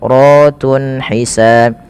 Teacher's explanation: Kemudian ratun ada mad tabi'i pada lafal ra, dan ra-nya di sini dibaca dengan tafkhim karena ra-nya dibaca berharakat fathah, maka dia dibaca dengan tebal.